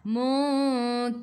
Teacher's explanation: Ra baris bawah kena baca dengan nipis, senyum.